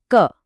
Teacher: क वर्ग की यह सारी ध्वनियां क, ख, ग, घ, ञ सीधे गले से आती हैं। इनको बोलते वक्त जबान का पिछला हिस्सा हमारे सॉफ्ट पैेट को छूता है।